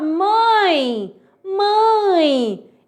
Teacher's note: esse e tem som de i, beleza? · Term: semivogal